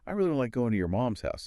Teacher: Voice dropping at the end there, it implies mutual understanding. You're not really asking if they understand. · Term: falling tone